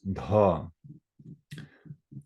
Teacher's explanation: So the dha is the aspirated one.